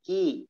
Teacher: Kaknya hati-hati. Tidak boleh dihamaskan. Tidak dikeluarkan nafasnya.